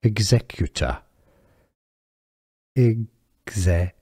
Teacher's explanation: The stress is on the Z syllable, the second syllable, executor. Now in American English it's similar, just that they use a flap T that sounds like a D.